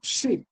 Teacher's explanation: vowel in sheep is long and tense